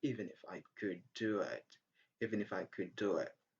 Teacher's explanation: In could, the sound d is silent because of the sound d in do.